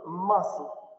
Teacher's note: Выпадает «к» в «muscle»